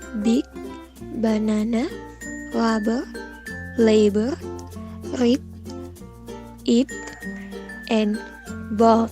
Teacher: in B there is a vibration in the vocal cords.